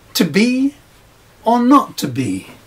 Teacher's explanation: That second B would not normally carry a stress in everyday speech